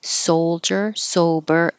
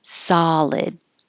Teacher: So these SOs are really O, soldier, sober, and this SO is really an ah, solid.